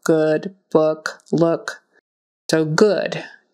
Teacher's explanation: good with the Horseshoe u in the middle even though it's spell oo